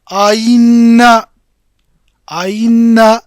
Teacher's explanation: ठीक है, तो यहाँ पर हमजा, दो जो हमजा आए, दूसरे वाले हमजा को हमने इस तौर पर अदा किया कि ये हमजा और या के दरमियान बैना बैना वाली आवाज़ में अदा किया जाएगा